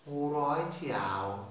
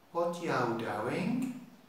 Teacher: Now they have certain phrases like you in Liverpool, in Birmingham, you becomes yow, yow